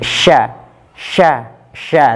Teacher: tengah lidah ditempelkan ke langit-langit atas